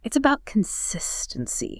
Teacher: they likely slowed down a bit for emphasis on the key takeaway